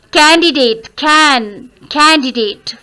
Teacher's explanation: First syllable is to be stressed.